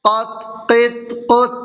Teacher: قاف طا زبر قط، طا حروف قلقلہ میں سے ہے، طا کے اوپر جزم ہے تو اس میں قلقلہ ہوگا